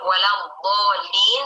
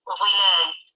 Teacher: mengucapkan salah dari huruf dhad ke huruf dha